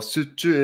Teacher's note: So when you're choosing the correct one for this one, this is an exemption because we have to also focus on consonant consonant assimilation. So because of consonant assimilation, the J letter becomes the Ch